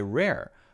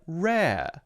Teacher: The second R sound at the end of the word or the end of the syllable is instead more open